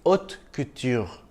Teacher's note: The sound of the R in French is somewhere between the R and H of English. Or you could think of it as a softer version of the Kh sound in Urdu, like in khair or khabar. · The H is silent and the T is soft in French. So it's haute couture, not hot couture.